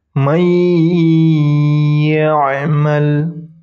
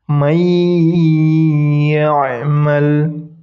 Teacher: Dan nunnya tidak dibaca, langsung masuk ke huruf ya. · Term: idgham bigunnah